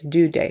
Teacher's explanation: she doesn't stick her tongue out for the th